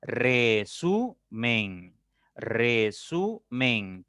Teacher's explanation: Su es la sílaba tónica porque ahí cae la mayor fuerza, la mayor intensidad de voz. · Resumen, resumen, tiene 3 sílabas. La sílaba su es la que tiene la mayor fuerza de voz, la que se pronuncia con mayor intensidad, con mayor énfasis.